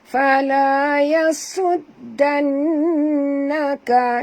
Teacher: kita kena dengung ya, kerana di atas nun ada tasydid, wajib al-gunah ya.